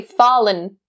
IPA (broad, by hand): ˈfɔːlɪn